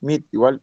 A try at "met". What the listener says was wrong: Se pronuncia met, ¿sí? Ya no meet, sino met. Met.